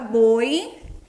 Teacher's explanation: Nós sabemos que em boi, o O é uma vogal e o I uma semivogal. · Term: ditongo chamado de decrescente